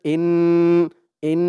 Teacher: একটু গুন্না করতে হবে ওয়াজিব গুন্না